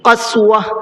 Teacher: گولتا پر جب وقف کرتے ہیں تو اس کا ہا بنا دیتے ہیں